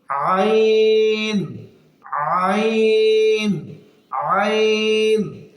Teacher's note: আইন হরফটি হলুকের মাঝখান থেকে